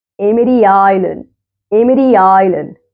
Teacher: Emri Island between two vowels fast D. D between two vowels fast D.